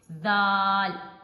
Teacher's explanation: دال کا بھی مخرج وہی ہوگا جو تا کا ہے، یعنی زبان کا سرا اور اوپر اور نیچے والے دانتوں کے اندرونی کناروں سے